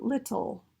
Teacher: The two L's sound different. We have the light L at the beginning, and we have the dark L at the end. All right, the dark L is also referred to as the velar L.